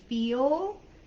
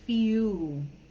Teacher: the letter L, they kind of just don't sound it like an L like we do in American English. It kind of sounds more like a vowel. So instead of saying feel, it would be few.